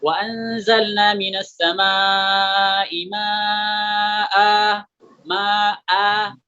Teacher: Di sini asalnya ma'an. Nah, ketika kita waqaf, maka tanwinnya ini digantikan dengan alif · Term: mad iwad